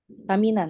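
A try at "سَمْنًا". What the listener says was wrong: Samnan minyak. Mimnya sukun.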